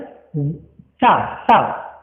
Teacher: जीभ जो है सा, सा, दांतों की जड़ों में टकराएगी